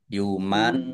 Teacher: Ya ditahan dua harakat agar tampak dengungannya